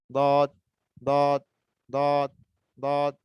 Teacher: জিহ্বার আগা থেকে কিন্তু উচ্চারণ হবে না, যদি সামনে থেকে উচ্চারণ করেন তাহলে ভুল হবে, দাল হয়ে যাবে।